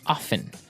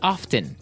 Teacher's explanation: They kind of leave out the strong T sound